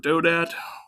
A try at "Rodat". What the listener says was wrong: Rodat. Rodat. Yeah, with an R. Rodat.